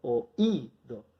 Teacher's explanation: toda la fuerza cuando hablo la pongo sobre la I, digo oído. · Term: hiato